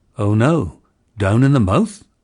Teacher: this diphthong had a centered onset and started with the schwa